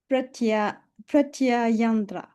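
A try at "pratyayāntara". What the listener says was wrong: No, not andra, antara, pratyayantara. You're missing out this vowel here. Tara, pratyantara. Pratyayantara.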